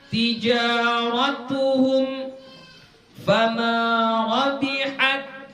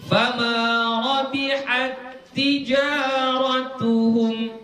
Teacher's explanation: Nah, itu ta jumpa dengan ta, ti, berjumpa ta dengan ta. Maka hukumnya idgham. Jadi kalau idgham biasanya dikasih tasydid, ya.